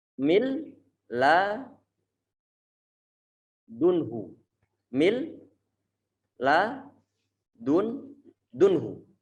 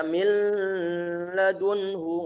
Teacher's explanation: pertemuan antara huruf nun yang sukun bertemu dengan huruf lam itu adalah idgham tanpa disertai dengan dengungan. Nggak boleh dibaca mil ladunhu, nggak boleh.